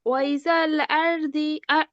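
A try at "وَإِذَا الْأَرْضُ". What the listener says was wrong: ওয়া ইদাল। ওয়া ইজাল হবে না, ওয়া আলাদা, ই আলাদা, যা আলাদা। ওয়া ইদাল আরদু।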